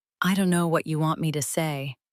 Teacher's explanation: Notice again, the important words stay clear. Know, want, say. The small words shrink.